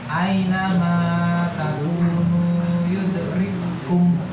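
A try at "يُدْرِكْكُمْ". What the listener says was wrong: Ya, yudrikum. Kum. Ya, hamas ya Pak. Kum sifatnya, bukan jahar.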